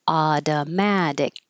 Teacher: This t changes to a d. And the final C at the end is a K sound that you won't release. Adamadic.